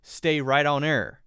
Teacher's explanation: the h sound in here is hard to catch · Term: soft h